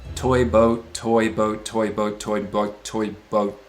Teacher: You're moving your tongue in a really similar way, from back to front and up a little for both of them, but you're having to move your lips in opposition to that.